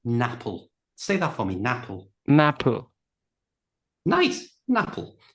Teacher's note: So we've got an in the middle. We can take that n and move it to the front of the a of apple. So apple becomes napple.